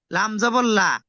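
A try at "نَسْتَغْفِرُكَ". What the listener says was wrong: নাস্তাগফিরুকা, কাফ জবর কা, লাম নয়, কাফ।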